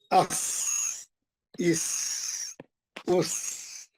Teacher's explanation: बारीक सीटी, तेज शार्प आवाज